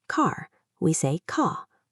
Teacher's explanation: we don't usually pronounce the R at the end of a word.